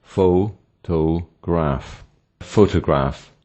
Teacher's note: The first syllable, pho, is stressed while the word has 3 syllables